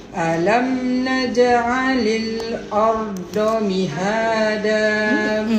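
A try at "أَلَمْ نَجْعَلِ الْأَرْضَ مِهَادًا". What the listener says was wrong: Bunyi do lagi. Bo. Dia kena besar lagi, kena kuat lagi, kena tebal lagi. Alam naj'alil arda mihada dengan ardo. Itu di do. Kita guna bahagian hujung lidah aja. Tak, dia kena guna semua lidah.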